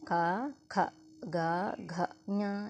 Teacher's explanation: కంఠం నుంచి పుట్టాయి కాబట్టి వీటి కంఠ్యాలు అంటారనమాట